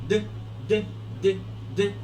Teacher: Ok, decide. La letra D, D, es un sonido plosivo también. D, es un poquito voiced.